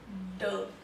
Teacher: जब आप ड साउंड निकाल रहे हैं आपकी टंग आपके माउथ के अपर पार्ट जिसको हम हार्ड पैलेट बोलते हैं उसको टच करिए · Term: consonant